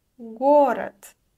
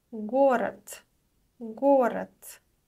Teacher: The voiced consonant at the end is pronounced as unvoiced t.